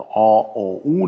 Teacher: Die hinteren sind gerundet, also O, O, U, das heißt, die Lippen sind rund dabei